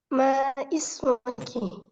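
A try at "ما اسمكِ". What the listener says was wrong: Mohon maaf, cara bacanya bukan ma ismuki, tapi mas muki. Diwasal ya, digabungkan. Mas muki.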